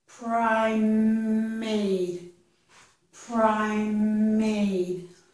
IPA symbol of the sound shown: m